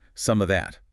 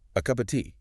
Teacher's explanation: The loss of the final V in the word of. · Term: elision